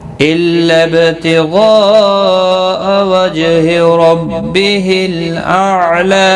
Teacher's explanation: إِلَّا با ساکن پر قلقلہ ہوگا، مد متصل ہے، 4 الف کے برابر کھینچ کر پڑھیں گے. جیم ساکن پر قلقلہ ہوگا، را پر پڑھا جائے گا.